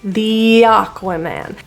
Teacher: In this word, the, it is pronounced as a full E pronunciation because there's a vowel coming right after it.